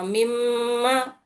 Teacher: तो यहां पर दिख रहा है यहां पर होठों से आधा होता मीम। दोनों होठ जब टच हो रहे तो आवाज जो है यहां से जाके सीधा नाक से आ रही।